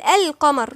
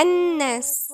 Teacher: يبقى اللام القمرية تنطق، اللام الشمسية لا تنطق